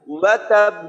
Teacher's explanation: আর ওয়াও উচ্চারণ করার সময় সবসময় আমরা শুরুতে ঠোঁট গোল করে তারপর উচ্চারণ করব, ঠোঁট একেবারেই গোল থাকবে